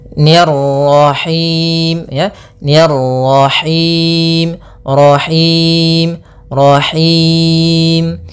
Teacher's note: kemudian ro-nya lagi tebal karena di sini ro tafkhim, yaitu ro yang berharakat tasydid.